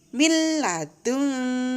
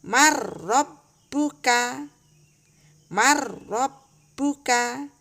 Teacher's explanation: perhatikan nun sukun tidak dibaca ya langsung ke huruf berikutnya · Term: idgham bilagunnah